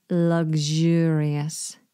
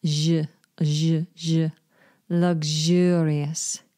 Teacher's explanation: You hear that lovely vibrating zh in the middle? I always think that this is like a French sound.